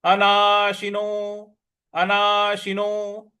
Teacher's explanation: नो को हमको दीर्घ खींचना है।